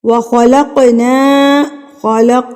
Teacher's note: خا کو آپ نے پر کر کے پڑھنا ہے، حروف مستعلیہ میں سے ہے